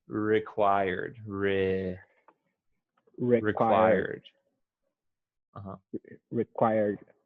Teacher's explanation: you want to emphasize the second syllable